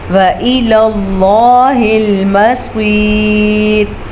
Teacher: لفظ اللہ کو ہم پر پڑھیں گے اور صاد کو بھی پر پڑھیں گے